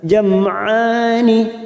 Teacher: mim sukun bertemu ain idhar safawi, kita baca jelas